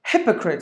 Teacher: You have to give the stress for the first syllable.